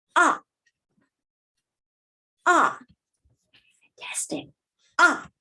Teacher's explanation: The fourth tone is from the highest pitch down, down, down, down to the lowest pitch. From the highest pitch down to the lowest pitch in short time.